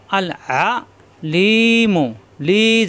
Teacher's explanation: আইন কণ্ঠনালীর মাঝখানে চাপ সৃষ্টি হবে